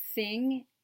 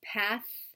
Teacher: the tongue between the teeth, the fricative voiceless sound as in the beginning of thing and the end of path